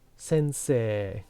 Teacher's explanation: When you have these two vowels together like this, sensei, this becomes a long vowel. Because you notice it's e, e.